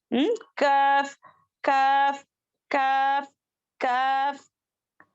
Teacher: کاف جو ہے سخت تالو سے، دیکھیں یہاں پر سخت تالو ہے.